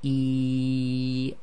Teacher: yeah and if you say e it's the same thing again the air flows all the way from the bottom of the throat out through the front of the mouth except for the middle of the tongue becomes more raised